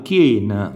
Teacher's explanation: In questo caso la IE e UO è sempre chiusa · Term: dittonghi